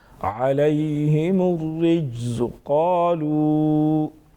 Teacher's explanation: عَلَيْهِمُ الرِّجْزُ قَالُوا، جیم حروف قلقلہ میں سے ہیں، یہاں پر ساکن بھی ہیں، اس میں قلقلہ کریں گے یعنی آواز میں جنبش پیدا ہوگی۔ وضاحت کے ساتھ جیم کو ادا کریں گے، زا کو سختی کے ساتھ پڑھیں گے۔